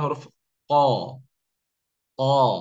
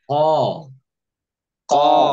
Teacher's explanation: pangkal lidah bertemu dengan bagian yang atas yang lunak alhak alahmi nah di situlah keluar huruf q